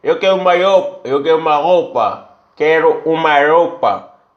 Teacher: Lugares que receberam imigração italiana, por exemplo, falam um R seco, com a língua atrás dos dentes.